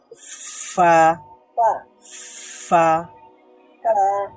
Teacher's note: উপরের দাঁতের অগ্রভাগ নিচের ঠোঁটের ভেজা জায়গা বা নরম জায়গা সেখানে যুক্ত হয় উচ্চারিত হয় ফা